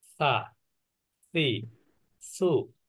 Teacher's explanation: এই অক্ষরটা হলো জিহ্বার আগা, উপরের দাঁতের আগা।